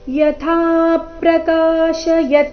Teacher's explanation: ಯಥಾ ಇಲ್ಲಿ ಥ ಮಹಾಪ್ರಾಣ ದೀರ್ಘ, ಥ ಮೇಲೆ ಪದ್ದು ಆಘಾತ ಕೂಡ ಬರಬೇಕು.